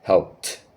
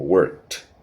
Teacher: Si continuamos, por ejemplo, mira esta acción worked, ves que work termina en k, entonces al ser ese sonido de nuevo que es mudo, entonces vamos a pronunciar con t y la e no se pronuncia, entonces será algo como worked. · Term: sonido de T